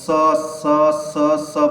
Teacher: ध्वनि जीभ फोल्ड होकर तालु पे लग रही है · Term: तालव्य